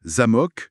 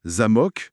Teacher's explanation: L'exemple classique, c'est zamok, accent sur le A, ça veut dire château. Ok, Mais si on déplace l'accent sur le O, zamok, eh bien là, ça veut dire serrure. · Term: l'accent tonique